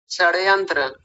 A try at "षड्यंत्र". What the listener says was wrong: षड्यंत्र, श का उच्चारण ठीक नहीं आ रहा है, बोलिए। षड्यंत्र, षड्यंत्र यानी ये वाला स लगा रहे हैं आप, षड्यंत्र, नहीं आ रहा। आप जब तक ऐसे अभ्यास नहीं करेंगे ना इस वाले तरीके से, तब तक आ ही नहीं सकता।